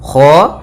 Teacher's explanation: Kha usahakan dia dari tenggorokan atas mendekati pangkal lidah kita.